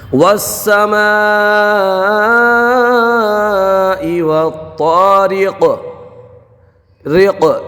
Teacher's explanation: رق یہ جو آواز ہے نا پلٹ کے آ رہی ہے، یہی قلقلہ ہے